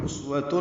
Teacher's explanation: واو ہونٹوں کی نہ تمام گلائی سے جلدی ادا کریں گے